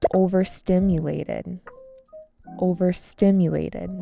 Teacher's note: This has an emphasis on the third syllable.